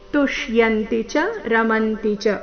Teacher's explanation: ಎಲ್ಲ ಅಕ್ಷರಗಳು ರಸ್ವ ಆದಕಾರಣ ಮಧ್ಯದಲ್ಲಿ ಯಾವುದೇ ಅಕ್ಷರದ ಮೇಲೆ ದೀರ್ಘ ಕಾಲದವರೆಗೂ ನಿಲ್ಬಾರದು